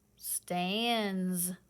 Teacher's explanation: you touching your throats is it vibrating n yes it is so that means that s is going to vibrate it's going to make that z sound